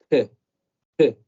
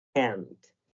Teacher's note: No solamente k, sino k, soltando un poco de aire como si hubiera una J después de la C.